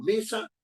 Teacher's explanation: Mesa, ¿no es cierto?, tiene dos sílabas, me y sa. La fuerza de voz está en me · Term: grave o llana